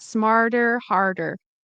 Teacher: it's a flap t but it's a little complicated because of the r sound